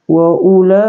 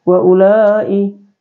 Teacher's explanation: mad wajib muttasilad muttasil cara membacanya dipanjangkan ee lima harakat ya dipanjangkan lima harakat lima ketukan ya Atau Dua Alif Tambah setengah Alif